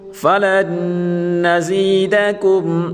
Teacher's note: لام کو نون کے ساتھ ملا کر پڑھیں گے اور نون مشدد ہے، ہمیشہ غنہ کے ساتھ پڑھیں گے